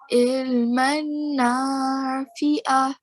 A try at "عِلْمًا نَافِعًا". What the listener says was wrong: Okay, let's stretch the sound out at the end. Fi'a.